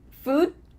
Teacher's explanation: What happens to that final D? We just cut it off.